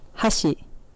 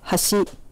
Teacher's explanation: Hashi, meaning chopsticks with an accent on the first mora. Hashi, meaning bridge with an accent on the second mora. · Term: pitch accent